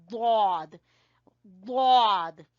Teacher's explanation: जिस तरह हम अगर मुंह खोलते हैं, जबान को बाहर लाते हैं, तो उसकी जो साइड होगी, चाहे वो कोई भी साइड हो, राइट साइड हो, लेफ्ट साइड हो, तो जबान की जो साइड है, जो जबान की करवट है, जब वो ऊपर वाली दाढ़ों की जड़ से जाके लगेगी तो वहां से अदा होगा दौद